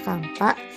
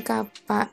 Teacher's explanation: ada bunyi m yang disisipkan di tengah kata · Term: penyisipan konsonan